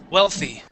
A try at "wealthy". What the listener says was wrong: instead of saying VY pronouncing a v we want to pronounce an oo sound